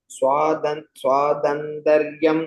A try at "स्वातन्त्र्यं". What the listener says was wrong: Correct, but in the second line, first word, you said swatantrayam. You said it's not full tra, it's only half tra. Swatantriyam.